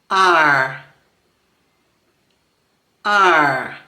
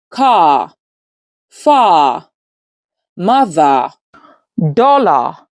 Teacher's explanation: To articulate the bashed sound, the tongue tip points down toward the bottom of the mouth. The middle of the tongue botches up toward the roof of the mouth which is the heart pallet.